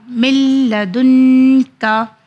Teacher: نون کو لکھا گیا ہے مگر پڑھا نہیں گیا ہے کیونکہ ادغام کا قانون ہے